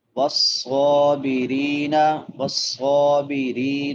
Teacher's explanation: را باریک ہوگی کیونکہ را کے نیچے زیر ہے، کسرہ ہے، اور را کے بعد یا مدہ ہے.